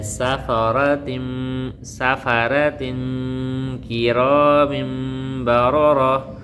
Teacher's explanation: تنوین کے بعد حرف اخفا میں سے کاف اخفا کا قاعدہ لگ رہا ہے، آواز کو ناک میں چھپا کر پڑھنا ہے